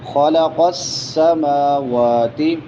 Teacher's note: خلق السماوات سین سیٹی والے حروف میں سے میم واو دونوں پہ کھڑی زبر ہے تو لمبا کر کے پڑھیں گے ایک الف کے برابر